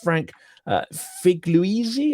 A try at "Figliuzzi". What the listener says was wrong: You get an A for effort, a B minus for pronunciation. It's three syllables. Figliuzzi.